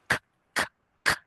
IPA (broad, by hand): k